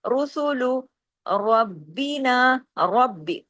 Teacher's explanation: را کو سختی سے پڑھنا ہے، را کو ہیوی پڑھنا ہے. رب ایک دفعہ پڑھا گیا، با، رب، اور پھر ربی، بازر بھی، ربی سختی سے جوڑنا ہے.